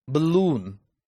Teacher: stress is on the second syllable because it has a long vowel